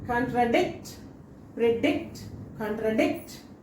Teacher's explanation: So dict should be stressed.